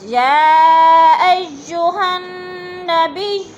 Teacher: 4 الفی مد ہے، اس کو 4 الف کے برابر ہم نے کھینچ کر پڑھنا ہے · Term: مد متصل